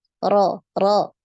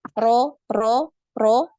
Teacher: jadi dinaikkan pangkal lidah biar ee hurufnya tebal